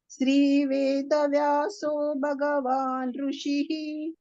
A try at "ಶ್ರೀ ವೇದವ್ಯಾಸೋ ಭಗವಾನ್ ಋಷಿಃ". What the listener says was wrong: ವೇದವ್ಯಾಸೋ ಹೇಳ್ಬಾರ್ದು, ವೇದವ್ಯಾಸೋ ಒತ್ತಕ್ಷರ ಇದೆ ಅಲ್ವಾ, ಹಾಗಾಗಿ ಒತ್ತಿ ಹೇಳ್ಬೇಕು. ವೇದವ್ಯಾಸೋ ಭಗವಾನ್ ಋಷಿಃ ಭಗವಾನ್ ಭ ಮಹಾಪ್ರಾಣ ಕೇಳ್ಬೇಕು. ಭಗವಾನ್ ಭಗವಾನ್ ಋಷಿಃ